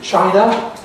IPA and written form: ˈʧaɪnə (China)